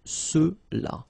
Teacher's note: final X is not pronounced, so you get the sound ce